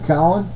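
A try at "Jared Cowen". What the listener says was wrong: Cowan. There's no A. But how would it be How would it be Cowan then?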